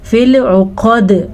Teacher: عین کے مخرج کا دھیان رکھنا ہے، قاف کو پر پڑھنا ہے اور دال پہ قلقلہ ہوگا